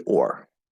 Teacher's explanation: if it's stressed, it's supposed to be or, okay, which is an R colored O. If it's not stressed, then it almost always gets pronounced as the same as the other three.